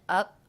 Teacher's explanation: I did not release the P here, so that's a stop consonant, up. My lips came together to make the P, but rather than releasing them up, I went right into the next word, with.